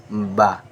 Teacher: দুই ঠোঁটের ভিজা অংশ থেকে বা উচ্চারিত হয়। যেমন এই দুই ঠোঁটের ভিজা করিয়া বা, একবার সাধারণ বা বা দুই ঠোঁটের ভিজা অংশ থেকে বা উচ্চারিত হয়, ঠিক আছে।